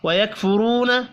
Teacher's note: را کو پیش کی وجہ سے پر پڑھیں گے، واو مدہ ایک الف کے برابر کھینچ کر پڑھا جائے گا۔